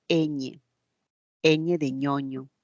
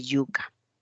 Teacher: el cuerpo de la lengua se tiene que aproximar a la parte más alta el paladar y en ese nivel se tiene que producir un sonido eñe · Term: palatales